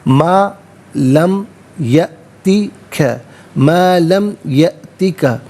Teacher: حمزہ ساکن ہے، جھٹکے کے ساتھ پڑھا جائے گا